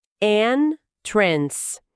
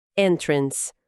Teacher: A força da palavra está no N, primeira sílaba.